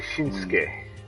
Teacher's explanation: Well, okay, yeah, you just said names could be a weird case, because Shinsuke Nakamura, that's spelled Shinsuke, but they say Shinsuke. Yeah, they dropped that last U.